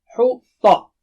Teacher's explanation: Ta is very thick and high.